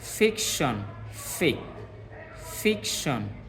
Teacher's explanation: এই যে আমরা ফিক যেটা বলতেছি এটা একটু আমাদের স্ট্রেস দিতে হচ্ছে